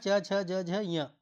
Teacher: च, छ, ज, झ, ञ ये सब तालव्य ध्वनियां हैं।